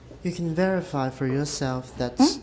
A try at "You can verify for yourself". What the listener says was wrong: Yourself, and also we never stress your, almost never stress your, for yourself.